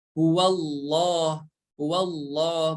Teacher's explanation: Maka ketika membaca lafaz Allah, kita harus memperhatikan harokat sebelumnya itu apa? Dikarenakan di sini harokat sebelumnya fathah, maka lafaz Allah ini dibaca tebal ya, dibaca tebal.